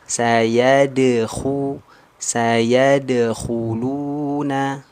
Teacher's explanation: Nah, huruf dal ada ini di sini ada qalqalah sughra. Nah, dal dipantulkan lembut tanpa ada jeda.